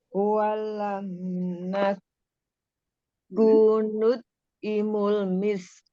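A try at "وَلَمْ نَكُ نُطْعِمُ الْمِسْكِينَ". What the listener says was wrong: Nut'imu. Nut'nya dikolkolahkan. Kolkolah sugro ya.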